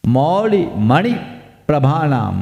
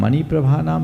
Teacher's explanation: प्र आ गया तो उसके पहले जो वर्ण है उस पर जोर देना